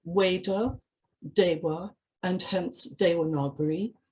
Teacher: the letter V, as written in English and pronounced in English, is normally pronounced as a W in Sanskrit. So for instance, words such as Veda, Deva, and hence Devanagari have their V's pronounced as W's in Sanskrit.